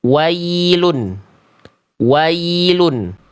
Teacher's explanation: Ketika diawali ya sukunnya oleh huruf berharokat fathah, seringkali dibaca dengan vokal E. Vokalnya miring, harusnya ke vokal I.